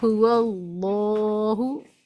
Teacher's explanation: هو اللہ میں اللہ کے لام سے پہلے زبر ہے اس لیے موٹا پڑھ رہے ہیں